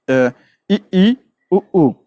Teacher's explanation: जिन स्वरों के उच्चारण में मुख द्वार लगभग बंद रहता है जैसे इ ई उ उ इसमें क्या हो रहा मुख थोड़ा